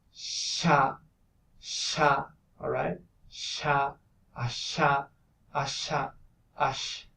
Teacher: you have to produce a narrowing in the middle of your mouth, in the palatal region. So that would make a constriction around this area, right? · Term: voiceless palatal fricative